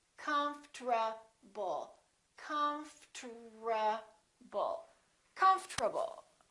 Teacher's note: to do it we don't say comfortable this is what happens the O disappears but then there's one more very strange thing that happens and that's the RT becomes a TR they change positions